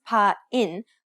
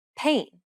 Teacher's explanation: two vowel sounds that are pronounced closely together in the same syllable take the english word pain for example it's not pronounced pa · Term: diphthong